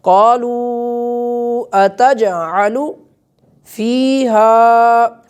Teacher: حرف مدہ ہے، اس کے بعد حمزہ آ رہا ہے تو اسے لمبا کر کے کھینچ کے اسے ہم ادا کریں گے